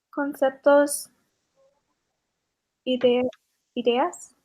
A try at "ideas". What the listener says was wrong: Ideas, very good.